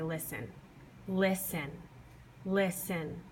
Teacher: I say list a little louder and I put a little more emphasis on it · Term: first syllable